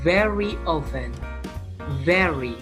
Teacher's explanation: Antara bibir atas dan bibir bawah. Ini bilabial sound.